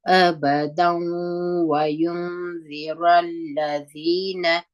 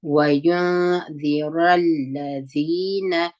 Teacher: دلته چې درېدلي یو د واو شد نه وایو واو په یوه زور وایو وينذر الذين دغه نون به ساکن دی ذال په پسې دی